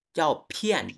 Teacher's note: পয় বলবেন, কিন্তু বাতাস বের হবে, একেবারে ফ হবে না